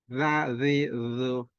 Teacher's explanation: Jadi cara mengucapkan hurufnya itu lidah, ujung lidah bertemu dengan ujung gigi.